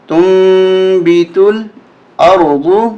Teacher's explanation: یہاں پر آپ نون بھی دیکھ رہے ہیں اور چھوٹا میم بھی دیکھ رہے ہیں، یہاں پر اقلاب کا قانون لگے گا، نون ساکن ہے اس کے بعد بار، تو اس نون کو بدل دیا جائے گا چھوٹے میم کے ساتھ، کیسے؟ تا میم پیش تم، تا میم پیش تم، بازر بی، تالام پیش تل، تم بیتل، حمزہ را زبر اور، واد پیش دو، میم ما، تم بیتل ارض۔